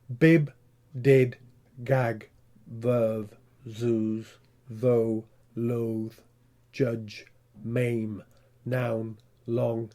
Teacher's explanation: they are voiced sounds but they have lost a little bit of voice and we call them devoiced